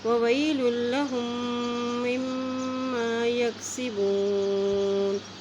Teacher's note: ان دو میم کے اوپر بھی شد ہے تو ان دونوں پر غنہ کریں گے